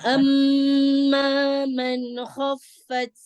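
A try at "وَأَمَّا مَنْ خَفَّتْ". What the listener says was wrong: Hati-hati nunnya ada tawalud. Jangan dilepas di makhrajnya dulu, lidahnya. Nah, izhar. Tadi kepanjangan ya, didengung. Nah, jangan ditarik lidahnya. Man, biarkan nempel ya ujung lidahnya di gusinya ya. Man, baru langsung pindah ya, kemudian langsung pindah ke kho ya.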